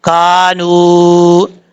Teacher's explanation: بی انہم، کاف الف زبر کا، نون واو پیش نو، کانو، نون کے بعد واو مدہ ہے، ایک الف کی مقدار، اس کو لمبا کر کے پڑھیں گے